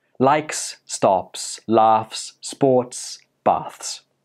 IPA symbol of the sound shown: s